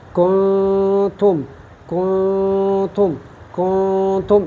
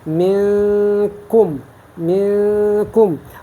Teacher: اس میں غنہ ضرور ہوگا، اور نون کو ہم مخفی کرتے ہیں یعنی کچھ نہ کچھ پوشیدہ کرتے ہیں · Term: اخفا